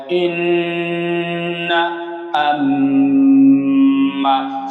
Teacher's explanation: নাকের বাঁশি হইতে গুন্নাহ উচ্চারিত হয়